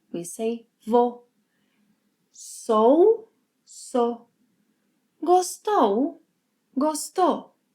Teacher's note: When speaking, Brazilians may omit the 'u' sound in verbs.